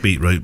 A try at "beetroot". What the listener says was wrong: You're one of those people that don't pronounce the T in beetroot. You said Beetroot.